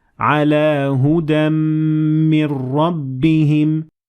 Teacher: پہلا ہدا کی تنوین کے ساتھ، تو ہم ہدن من کی بجائے ہدم من کہیں گے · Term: ادغام